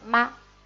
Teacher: Y aquí tenemos el tono ligero, neutral, se dice ma, muy corto